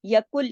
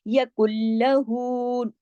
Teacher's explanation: ادغام ہو رہا ہے لیکن غنہ بھی نہیں ہو رہا